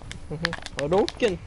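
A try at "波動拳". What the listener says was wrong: He doesn't say it like how you're supposed to, he doesn't say it the correct way, but he still says it. He says it too fast. Then it's supposed to be Hadouken!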